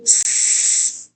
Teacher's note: pass ends with double S, and I do s, no vibration